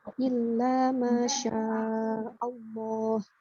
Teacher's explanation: Jadi lafaz Allahnya dibaca 2 harokat, kemudian ditebalkan.